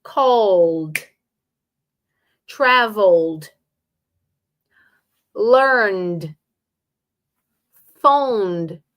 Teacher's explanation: You will emphasize the first syllable. · don't invent a vowel in the middle. The E is still silent.